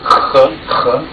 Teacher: Here we have the H sound. It's written as an H, but it's a little bit more guttural. Ch. This is the IPA symbol here.